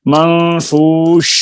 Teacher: یہ شین کی آواز آپ کو دیکھیں جاری، جتنی دیر چاہے اس کو لمبا کر سکتے ہیں، لیکن لمبا تو اتنا ہی کرنا ہے جتنا تجوید کا، یعنی اس کے اندر لمبے ہونے کی صلاحیت ہے، کتنا دیر جاری رکھنا ہے آواز کو، وہ تجوید کے قواعد بتائیں گے۔ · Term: رخاوت